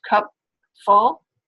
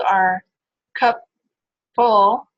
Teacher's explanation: We sort of make that stop with our lower lip and our teeth, and then move on to the F sound with that same place of articulation.